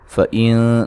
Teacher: نون ساکن کا باریک اخفا ہے